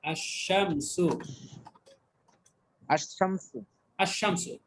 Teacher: লামের উচ্চারণটা মানে আর নেই, এটা লুকিয়ে গেছে, না লামের উচ্চারণটা আর হয়নি এখানে, আশ-শামসু। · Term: হরফে শামসিয়া